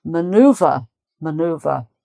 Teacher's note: it doesn't sound much different apart from perhaps the final R in American maneuver so you would hear more of an R uh from an American speaker